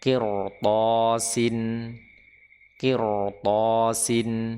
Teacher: Di sini ra dibaca tebal, meskipun sebelumnya kasrah, qaf kasrah, karena setelahnya adalah huruf isti'la yang ya, berharokat fathah, ya berharokat fathah atau berharokat bukan kasroh, maka dia dibaca dengan tebal.